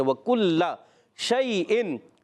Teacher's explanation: شین زبان کے درمیان تالو کے درمیان سے ادا ہوتا ہے، اور اس میں ایک صفت پائی جاتی ہے جس کو کہتے ہیں تفشی.